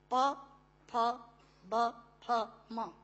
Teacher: प फ ब फ म दोनों होंठ मिलाकर बोले जा सकते हैं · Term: ओष्ठांग